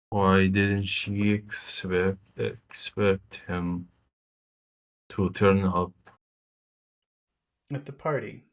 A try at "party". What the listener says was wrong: Okay, but it's not Barty. You're eating your pea. You're pushing your pea. You're pushing your pea down and making a B. A B. A B sound is a pea that you eat.